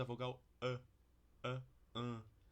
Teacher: a nossa vogal central nasalizada, ela não é na verdade A, ela é um pouquinho mais para cima, um pouquinho mais média